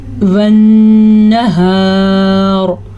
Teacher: غنہ بھی ادا کرنا ہے اور را کو پر بھی پڑھنا ہے